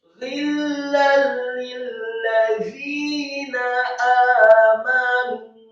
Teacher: alifnya dua harokat, kemudian mim yang fathah satu harokat, kemudian nunnya yang marfu atau dhamma dua harokat karena setelahnya ada wawu sukun dan menunjukkan sifat jamak.